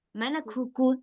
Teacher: Dia agak ada hamsnya, ada anginnya sedikit. Oke. Ini dia lebih ringan dari huruf qaf. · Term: kaf